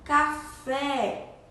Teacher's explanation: Café tem o som aberto. E a sílaba tônica é fé, que é a sílaba mais forte.